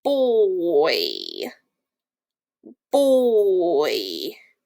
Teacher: We hear that oi sound, which is a diphthong, at the end of the word.